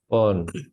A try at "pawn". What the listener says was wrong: Would you like to change ow into o, please? Longer o. Yeah, so pawn. Not pound, but pawn. Seems like you're saying o, but longer o. So pawn shop, pawn.